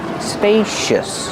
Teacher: Use a long a like pay and say spacious. The C makes a sh sound like shoes and show